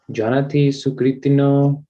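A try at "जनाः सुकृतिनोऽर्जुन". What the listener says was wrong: Not Janati, but Jana. Jana sukritino arjuna.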